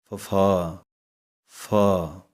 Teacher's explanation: ਹੈ ਇਹਦੇ ਵਿੱਚ ਆਪਾਂ ਦੋਵੇਂ ਬੁੱਲਾਂ ਨੂੰ ਜੁੜਨ ਨਹੀਂ ਦੇਣਾ ਹੈ। ਇਹਦੀ ਆਵਾਜ਼ ਕੱਢਣ ਵਾਸਤੇ ਜੋ ਉੱਪਰਲੇ ਦੰਦ ਹਨ ਹੇਠਲੇ ਵਾਲੇ ਬੁੱਲਾਂ ਦੇ ਨਾਲ ਲੱਗਣਗੇ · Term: ਫਫੇ ਪੈਰ ਬਿੰਦੀ